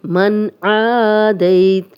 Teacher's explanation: اب یہاں پہ نون ساکن ہے اور آگے حرف حلقی میں سے آ گیا ہے تو ہم یہاں پہ غنہ نہیں کریں گے · دئی یا لین ہے، جزم والی یا، دال پہ زبر، تو بغیر کھینچے نرمی سے پڑھیں گے، تا پہ جزم لگا کے وقف کریں گے۔